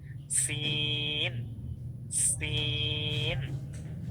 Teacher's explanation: আপনি যখন সিন পড়েন তখন দেখবেন অটোমেটিকলি জিহ্বার আগা নিচেই লাগে। সিন, সিন, আলাদা কষ্ট করতে হচ্ছে না।